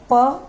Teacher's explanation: दोनों होठ हमारे टच हो रहे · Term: ओष्ठ